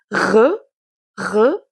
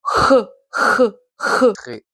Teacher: Ce son vient plus ou moins du fond de votre gorge et vous pouvez plus ou moins forcer dessus. Vous pouvez le prononcer à la française comme re, re, ou un peu plus à l'espagnol, un peu comme un J, comme re, re, re. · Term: R guttural